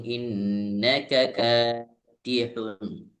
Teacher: K panjang. K pertama pendek K kedua panjang